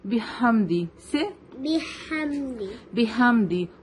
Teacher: ہا وہ coming from دی middle part of دی throat تو اٹ ول بی شارپ